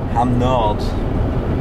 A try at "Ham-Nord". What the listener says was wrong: You don't say the D.